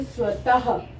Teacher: जहाँ पे विसर्ग लगा उसको बोलने के लिए हम ह की साउंड देते हैं